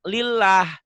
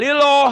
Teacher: Tapi ternyata kita juga ngomong lillah. Nggak liloh, nggak boleh. Karena sebelum lafaz Allah baris di bawah ya.